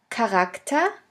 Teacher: the CH can also be pronounced like a K if it is at the beginning of a word